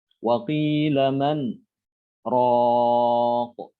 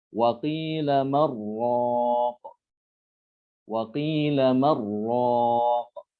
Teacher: man dibaca idhar. Jadi tidak boleh diidghamkan ke ro, ya. Tidak boleh dibacanya waqila marraq. · Jadi diidghamkan ke ro, tapi itu bukan thorik syatibiyah. Waqila man raq, itu namanya saktah.